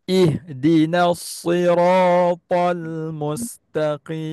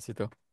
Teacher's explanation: Dia makhraj sama tapi dia punya sifat dia berbeza. Sad dia tebal, sin dia nipis. So. Cuma kalau baris bawah, dia tebal dia tu kurang sikit lah.